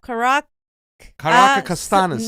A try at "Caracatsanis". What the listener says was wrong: No, you're adding another syllable in there. No, it's Caracatsanis.